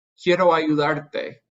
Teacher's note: the stress in ayudar is on the AR. By adding a syllable that ends in an E, that automatically puts the stress on the second to last syllable.